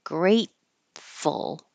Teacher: So you won't hear that T because the tongue will go to the T position, great, and just stop the airflow, and then go to the F, grateful.